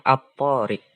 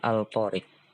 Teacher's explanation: alif lam ketemu huruf tho maka cara membacanya dileburkan atau di idghomkan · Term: alif lam syamsiah